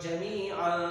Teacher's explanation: جب یہ تنوین آتی ہے تو آواز نوز میں چلی جاتی ہے، آواز کو ناک میں چھپانا ہوتا ہے ، تو 1 سیکنڈ کی اس کی ڈیوریشن ہوتی ہے، تو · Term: غنہ